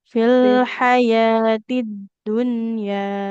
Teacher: Jadi dalnya enggak boleh dipantulkan